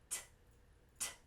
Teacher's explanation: We have that explosive t sound, which is light. It shouldn't sound like a D.